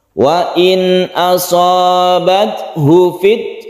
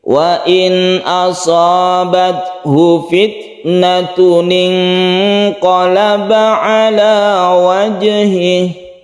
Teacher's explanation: Di sini ada hak dhamir, tapi dia itu tidak panjang. Jadinya hunya jangan dipanjangkan, ini harus lincah. Wa in asabathu fit, langsung hu ke fi.